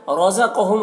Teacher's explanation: رزقہم، را کو پر پڑھیں گے، قاف کو بھی پر پڑھیں گے